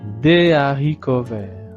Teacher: ici avec le mot haricot, il n'y a pas de liaison